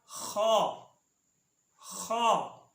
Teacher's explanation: اس کے بعد خا، خا یعنی ادنی حلق سے، ادنی حلق سے یعنی حلق کا وہ حصہ جو منہ کی طرف ہے، اس سے خا، خا ادا ہوتی ہے۔